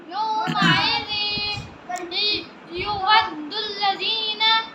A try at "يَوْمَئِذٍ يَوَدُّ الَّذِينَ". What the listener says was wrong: یو نہیں کریں گے، یا کریں گے، یود الذین. ٹھیک ہے، یومئذ یود الذین.